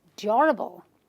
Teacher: So this word has 2 syllables, which is durable, durable, durable, durable. So I will stress on the first syllable and say durable, not durable.